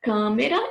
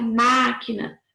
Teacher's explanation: Câmera, o A tem som fechado e máquina o A tem som aberto.